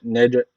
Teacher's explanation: cim harfi cezim almış. Burada kalkale tecviti var. Birazcık vurguluyoruz.